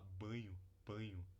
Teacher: É possível falar banho, banho. Então fazer um ditongo aqui final crescente no lugar dessa consoante nasal